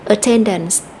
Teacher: danh từ attendance attendance thì chúng ta sẽ nhấn âm ten